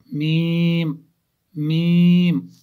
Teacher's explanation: दोनों होंठों की खुश्की का हिस्सा, जो हमारे होंठ है खुश्क वाले हिस्से जो बाहर है, वही जब आपस में मिलते हैं तो वहाँ से मीम निकलता है।